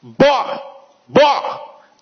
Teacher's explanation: Observa que o B, ele começa com interrupção, mas o O não tem.